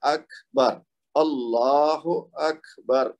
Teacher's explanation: تو یہ جس طرح یہ پورے 10 کا اصول ہم نے پڑھا ہے, اسی طرح کاف کی مثال ہے اللہ اکبر. تو اکبر, کاف کو تھوڑا سا ہمس کرنا ہے اور اس کے بعد با پہ جانا ہے